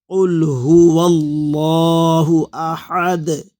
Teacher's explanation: اللہ کے پہلے زبر ہو، پیش ہو تو اللہ کا لام پر پڑھتے ہیں، موٹا ہوتا ہے۔ یہاں پر اللہ کے پہلے ہوا میں جو واو ہے اس پر زبر ہے، اس لیے اللہ کا لام موٹا پڑھا جا رہا ہے